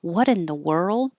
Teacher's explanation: the T will change to a d